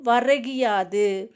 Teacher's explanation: கூ அப்படிங்கிறது கீ அப்படின்னு மாறி ஒலிக்குது. அதுவும் முழுமையாக ஒரு மாத்திரை அளவில் ஒலிக்காமல் அரை மாத்திரை அளவாக ஒலிக்கும். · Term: குற்றிய லிகரம்